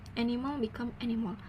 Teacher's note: the speaker adds a new vowel oo sound in the last syllable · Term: extra vowel